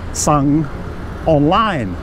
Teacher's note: So it's sorcerer, which is a high class consonant, and the first tone mark, so that gives it a low tone. So it says sung online.